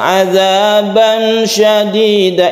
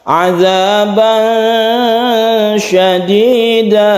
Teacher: Kita panjangkan dulu, kita tahan dulu sehingga ikhfa-nya itu menjadi sempurna. Karena ikhfa itu ketika kita membaca tanwin, kita bersiap membaca shin dengan sempurna.